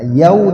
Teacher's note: Ya sukun dengan waw sukun. Ya sukun dibaca i, waw sukun dibaca u. Ya, jadi yau. Tidak dipanjangkan tapi diayun. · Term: mad lin